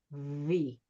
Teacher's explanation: We, if they're always saying V. V is a sound where your teeth, your top teeth, are going to be touching your bottom lip. But you want to keep it loose so that air can flow out.